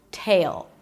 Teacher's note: An aspirated T, a long A as in day, and a dark L. Tail sounds like you're adding a Y sound right before the L. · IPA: ˈteɪɫ